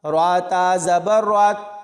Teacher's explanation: را کو تا کے ساتھ ملائیں گے تو را پر یعنی موٹا پڑھا جائے گا